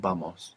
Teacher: the V in Spanish can sound like a V in English, like a V, or it can sound like a soft B, like boy. You might be familiar with the word vamos, which means let's go.